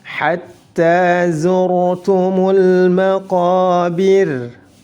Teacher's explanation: Hatta tak bertasydid ditahan 1 harakat. Kemudian dipanjangkan 2 harakat.